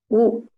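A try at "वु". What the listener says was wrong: It is wu. It is not just u. Wu. Vakara sound and ukara sound, both.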